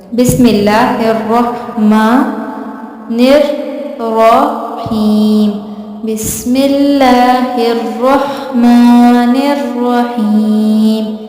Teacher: بسم اللہ الرحمن الرحیم، بسم اللہ الرحمن الرحیم. میم، رحمان کی میم کے اوپر کھڑی زبر ہے اسی لیے جو میم ہے وہ ایک الف کے برابر لمبا کریں گے